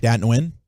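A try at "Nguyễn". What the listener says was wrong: There's no N. I don't think you say the N.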